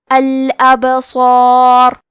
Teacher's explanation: یہاں با کا حکم ہے قلقلہ. قلقلہ کا معنی ہے حرف ساکن کو ہلانا، تو ہم حرف البا کو ہلاتے ہوئے یہ کلمہ کو پڑھیں گے